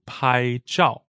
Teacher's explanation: 拍 is first tone and 照 is fourth tone